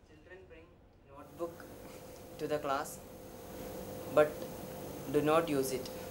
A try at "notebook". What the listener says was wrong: They pronounce NOT as NOTE and NOTE as NOT. So what should be notebook becomes notebook, and what should be not becomes note. But once you pay attention, move your tongue accordingly, open your mouth accordingly, and you take care of it.